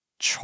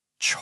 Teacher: It's a falling then rising tone. I want you to imagine your voice literally tracing the shape of a small letter V. It dips down and then it comes right back up. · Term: third tone